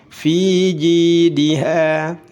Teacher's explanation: fi panjang 2 harakat, ji juga panjang 2 harakat, diha, ha 2 harakat, semuanya mad tabi'i.